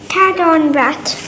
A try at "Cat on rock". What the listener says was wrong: That's not rat. लेकिन this is not rat. There's no t in here.